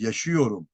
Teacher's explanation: ünlü daralması yani a ünlüsü ne yapıyor daralıyor